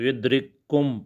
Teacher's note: کاف دو کاف آئے ہیں، پہلا ساکن ہے، پہلے ساکن ہم دوسرے کے اندر مدغم کر دیں گے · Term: ادغام